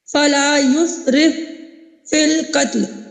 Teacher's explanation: اب فا ساکن، اس کے فوراً بعد فا آ رہا ہے، تو یہ دونوں مدغم اور مدغم فی مخارج اور صفات میں متحد ہیں، اور پہلا ساکن ہے، دوسرا متحرک ہے. پہلے کو ہم نے دوسرے میں داخل کیا، پہلے کی کوئی صفت باقی نہیں رہی، لہذا مثلین میں صرف ادغام تام ہوا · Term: ادغام مثلین صغیر